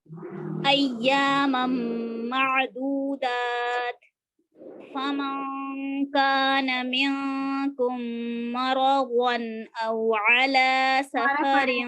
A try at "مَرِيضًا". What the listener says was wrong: مرضن نہیں ہے یہ، مریضن. مریض